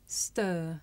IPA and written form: stɜː(r) (stir)